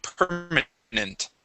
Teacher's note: Okay, permanent. Instead of nent with a short e, we use a uh short i sound.